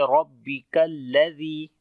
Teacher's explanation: کاف کو باریک پڑھیں گے اور لام کے ساتھ ملائیں گے